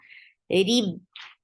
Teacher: Rib for kasra, give e sound, attached with ba. Rib, no qalqala because ba is with tashdid. When ba gets sakoon, then we create qalqala.